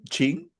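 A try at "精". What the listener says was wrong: Oh, J again. So Jing.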